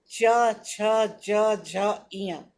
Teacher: ये तालव्य कहे गए क्योंकि इसमें तालु का सहयोग होता है।